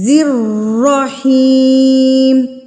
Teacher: را کے اوپر تشدید ہے تو اس کو مضبوطی سے پڑھنا ہے